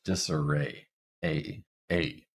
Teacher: And then for disarray, this is the a sound. We start at the front mid, and then we move up very slightly to it to end it. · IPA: [eɪ]